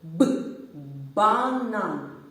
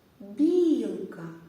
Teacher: в слові банан б як звучить твердо б банан А у слові білка бі звучить м'яко білка